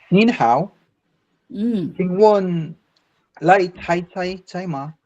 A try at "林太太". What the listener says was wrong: 不是来太太哈，林太太。